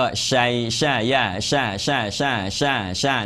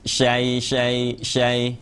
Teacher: กลางลิ้นอัดกลางเพดาน